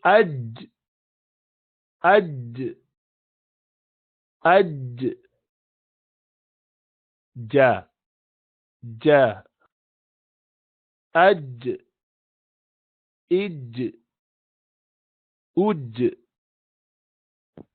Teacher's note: زبان کا بیچ اوپر لگتا ہے، لیکن آپ تھوڑی سی جگہ اس میں نہیں چھوڑتے ہیں، بالکل بھی ملا دیتے ہیں. سو یہ تو اج اج، وہ اوپر چپکانا پڑتا ہے بیچ کے حصے کو. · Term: جیم